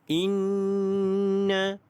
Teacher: Baik, hukum tajwid yang ada pada ayat ini adalah yang pertama, nun yang ada tanda syaddah. Ini didengungkan dua harakat · nun yang ada tanda syaddah. Ini didengungkan dua harakat kerana kerana wajibul gunnah.